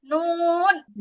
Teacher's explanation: জিহ্বার আগা উপরের তালুর সাথে লাগবে